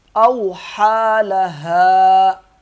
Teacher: اوحا، ہا کو 1 الف کے برابر کھینچیں گے۔ اوحى لها، ہا کو وقف کی صورت میں 1 الف کے برابر کھینچیں گے اور ملا کے پڑھیں گے، تب بھی 1 الف کے برابر کھینچ کے پڑھا جائے گا۔